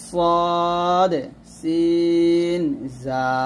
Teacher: জিহ্বার আগার সামনে নিচে 2 দাঁতের আগার সঙ্গে লাগিয়ে 3টি হরফ উচ্চারিত হয়